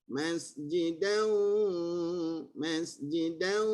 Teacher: nun yang tebal, bukan dal tu tebal, nun yang tebal